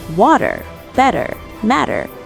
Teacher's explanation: Third, we learned about the flap T. The T sounds like a D in the middle of words like water, better, matter.